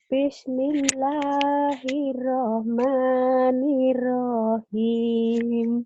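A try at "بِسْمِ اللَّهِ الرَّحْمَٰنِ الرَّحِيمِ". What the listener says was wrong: Oke, bagus nadanya, tapi perhatikan samberannya. Hirrahmanirrahim. Jadi, hirrahmanirrahim. Nirrahim. Roknya pendeknya langsung rahim. Panjang.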